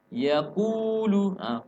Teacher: Kunya dipanjangkan 2 harakat karena bersambung dengan huruf mad yaitu huruf waw.